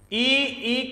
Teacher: ई ई का उच्चारण स्थान है ताल